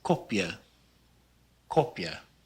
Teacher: the short o is rounded a bit more than it is in english we pronounce it as an o sound instead of an ah sound